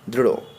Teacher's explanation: এদের উচ্চারণে জিহ্বার অগ্রভাগ উল্টে গিয়ে মূর্ধাকে স্পর্শ করে এবং দন্তমূলকে তাড়না করে, সেজন্য এদের বলে তাড়নাজাত বর্ণ।